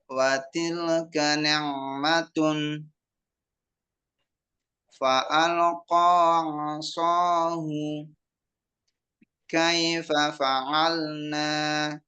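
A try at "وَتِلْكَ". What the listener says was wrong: Jadi waktu di watilka tadi antum agak mantul suaranya, balik. Watilka, tapi jangan mantul. Dia sedikit ngalir. Watilka.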